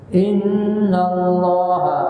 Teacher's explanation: Allah dibaca dengan tebal sebelumnya baris atas